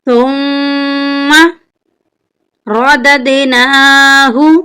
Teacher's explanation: ثُمَّ، یہاں پر میم کے اوپر شد ہے، میم مشدد ہے، اس لیے ہم میم پر غنہ کریں گے۔ غنہ کا مطلب ہے ناک میں آواز لے جانا